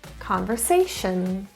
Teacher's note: the stress is in the third syllable